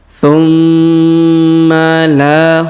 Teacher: Ma berharakat tasdid maka kita tahan dan kita tekan tumma la huruf la kita panjangkan dua harakat karena di depannya terdapat Alif